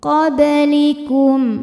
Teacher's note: ba yang sukunnya ini sukun asli dan ada di tengah bacaan dibacanya dipantulkan dengan pantulan yang kecil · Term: Qalqalah Sugra